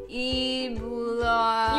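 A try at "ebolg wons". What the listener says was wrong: You keep pronouncing the E's. You say snow globe.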